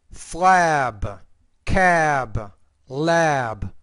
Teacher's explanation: have the P at at the end the vowel is shorter when you have the B at the end the vowel is longer because the B is a voice consonant and the p is a voiceless consonant